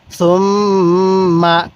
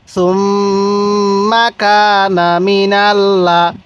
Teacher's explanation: তো মিমের উপর তাজদিদ আছে এজন্য আমরা গুন্নাহ করব। তাহলে সুম মা, কাফ আলিফ জবর কা, নুন জবর না, সুম মা কা না।